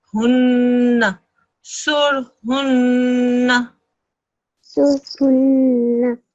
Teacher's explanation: So this is a sur. Then you do the noon mushaddad ghunna sound.